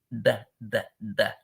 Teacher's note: So so you kind of blow in. Your tongue is touching the top gum behind the top row of teeth, and you're going the.